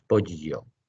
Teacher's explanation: Pollo, el animal que se come, se pronuncia con la palatal. Acercamos el dorso de la lengua al paladar superior sin tocarlo y dejamos que el aire salga por los lados.